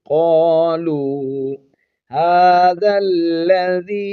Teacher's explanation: واو کو بھی یہاں پر حرف مدہ ہے، ایک الف کی مقدار ہی کھینچیں گے